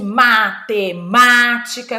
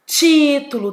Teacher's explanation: Toda a proparoxítona, ou seja, toda aquela palavrinha que tem a sílaba forte como a antepenúltima, a terceira de trás para frente, ela vai ser acentuada.